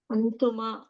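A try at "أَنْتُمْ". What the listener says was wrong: లేదు సుకూన్ ఉంది ఇక్కడ సుకూన్ అంటే ఆపేయాలి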